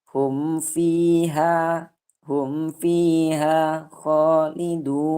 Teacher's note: Izhar syafawi, hukum bacaannya jelas, tidak didengungkan dan tidak disamarkan.